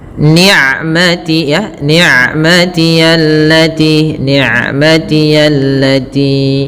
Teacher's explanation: Ain sifatnya bainiah antara syiddah dengan rakhawa. Tidak terlalu dialirkan suaranya dan tidak boleh diputus juga tapi tengah-tengah. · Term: bainiyah